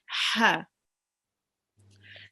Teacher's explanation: here we have the ha, which is read from the middle of the throat.